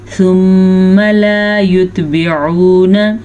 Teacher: ثم میم کا غنہ ادا کر لیجیے گا